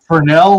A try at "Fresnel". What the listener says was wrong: The S is silent. Well, put it this way: in the industry that uses Fresnel lenses the most, which is Broadway stage, that's the silent.